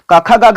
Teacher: क कहते हैं तो डायरेक्ट लगता है कि कंठ से आवाज बाहर आ रही है, मुंह का कोई अंग जो है एक दूसरे अंग को नहीं छूता है